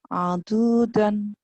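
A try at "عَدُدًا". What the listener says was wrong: Enggak ada yang panjang.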